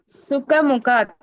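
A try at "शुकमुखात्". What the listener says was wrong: இல்ல, சுகா கிடையாது. சுகா. ஷூ போடுற மாதிரி சொல்லு. சுகா. சுகர் மாதிரி. சுகமுகா.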